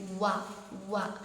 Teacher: വ പറയുമ്പോൾ നമ്മുടെ ചുണ്ട് വൃത്താകൃതിയിൽ മുമപോട്ട് വരണം വവ ഒരിക്കലും വ എന്നാവരുത് മലയാളത്തിൽ നമ്മൾ പറയുന്ന വ പോലെ ഈ അറബിയിലെ